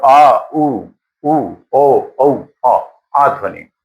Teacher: इनके उच्चारण में आप देखेंगे जीभ का पश्च भाग जो है वो सक्रिय होता है